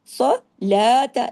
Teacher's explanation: زبر تا صرف ایک حرکت اور باریک بھی، اقام الصلاۃ، صلاۃ، لام کو تو ہم نے 2 حرکات کھینچا، لیکن تا کو نہیں کھینچنا